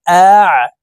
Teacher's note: আইন হরফকে হলকের মধ্যখান থেকে চাপ দিয়ে উচ্চারণ করব, কারণ আইনের মাখরাজ হলকের মধ্যখান থেকে হবে।